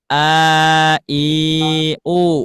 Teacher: Jadi ketika mengucapkan huruf hamzah sama huruf ha pasti si si aqsal halqi bergetar. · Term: makhraj aqsal halqi